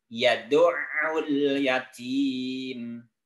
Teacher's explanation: Tapi ainnya tasydid. Yad'ul agak ke dalam karena makhraj ain termasuk makhraj halqi, makhraj yang ada di tenggorokan.